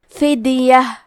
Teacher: منکم، کلمت فدیہ میں حرف دال پہ جزم ہے، یہاں دال کا حکم ہے قلقلہ تو ہم یہ حرف کو ہلاتے ہوئے یہ کلمہ کو پڑھیں گے